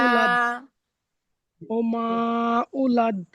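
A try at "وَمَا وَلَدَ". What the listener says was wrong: উলাদ নেই, ওয়ামা ওয়ালাদ।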